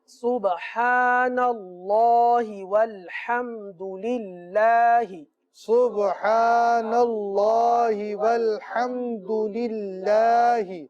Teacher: سبحان اللہ میں جو اللہ عز و جل کا نام ہے یہ پر پڑھا جائے گا، والحمد للہ میں جو اللہ عز و جل کا نام ہے یہ باریک پڑھا جائے گا